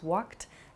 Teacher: You might hear a word like walked also, which has a sort of T sound about it. Walk becomes walked.